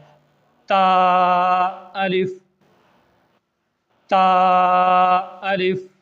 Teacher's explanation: د ژبې سر چې کله مخامخ برنو دواړو غاښونو د ویښونو سره په سختۍ سره ولګي، دا برني دوه غاښونه او دا د ژبې سر، دا چې کله د برنو دوو غاښونو سره په سختۍ سره ولګي نو د هغې نه تا ادا کیږي.